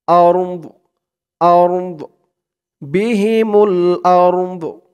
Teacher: হামজা দিয়ে র কেও ধরবে, দদ কেও ধরবে। দদের আওয়াজটা লাস্টে একটু ভাসবে।